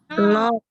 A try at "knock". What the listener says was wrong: Knock. Kaknya silent bintang sekali lagi. Knock.